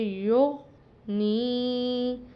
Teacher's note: یا سیدھا پیش غین ساکن یو، نون پڑی زیر یا ساکن نی، یو نی۔ اب یہاں پر نون کے نیچے زیر ہے، آگے یا ساکن ہے، تو اس کو ایک الف کے برابر لمبا کر کے پڑھیں گے۔ رول ہے حروف مدہ میں کہ زیر ہو حرف کے نیچے اور اگلا حرف جو ہے یا ساکن ہو تو پھر اس کو ایک الف کے برابر لمبا کر کے یا کھینچ کے پڑھتے ہیں۔